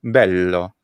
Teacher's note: already had a good answer anyway right which is that italian already has a very thick sound by its palatalization of a geminated l sound